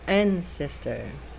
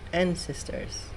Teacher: So, tandaan nyo po, ang diin at taas ng boses ay sa unang pantig